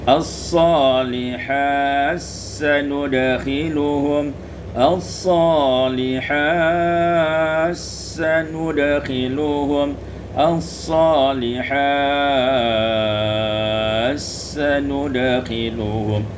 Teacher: Pada ayat yang 122 as-salihati sanudkhiluhum, idghamut ta fi sin, diidghamkan ta pada sin menjadi as-salihat sanudkhiluhum as-salihat sanudkhiluhum as-salihat sanudkhiluhum.